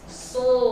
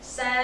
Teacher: Yang satu isti'la tebal, yang satu lagi tipis, berlawanan dia. Cuma satu sifatnya aja yang beda.